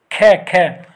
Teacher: ख बोल कर देखेंगे तो ये कहां से आ रही है आवाज? हमारी कंठ से आ रही है। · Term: कंठ्य